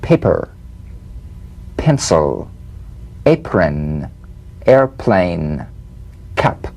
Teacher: The whispered tap of this drumbeat P is played with a light springing apart of the lips, just like for the B. On the springing away, feel a B in a whisper, without any puff of air. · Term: unvoiced labial stop consonant